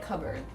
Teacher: you don't really pronounce the r in the last part